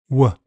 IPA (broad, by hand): w